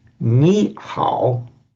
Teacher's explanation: when you get a third tone followed by a third tone, the first one becomes second tone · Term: tone sandhi